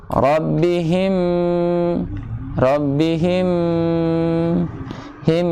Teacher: idgham dengan dengung, maka harus disertakan dengan bacaan dengung, yaitu dengan suara masuk pada pangkal hidung.